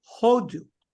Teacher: Now, the word India is what? Hodu. The pronunciation is on the first syllable. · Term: emphasis